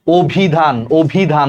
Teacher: অভিধান দেখো ওর মতো হয়ে গেছে, কারণ অর পর হ্রস্ব ইকার আছে, অর উচ্চারণটা ওর মতো হয়ে গেছে, এটার উচ্চারণ হবে অভিধান। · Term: আদ্য অ